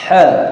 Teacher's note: huruf ha itu di tenggorokan bagian tengah